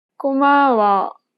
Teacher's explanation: 고마워. She kept the same pitch for the first and second syllable, but lowered the tone for the last syllable.